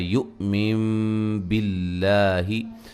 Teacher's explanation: नून साकिन का इक़लाब है, नून को मीम से बदल देंगे